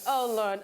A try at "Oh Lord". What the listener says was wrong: Why your Lord get R? you get R, but you can't stress the R. Can't be like capital letter R.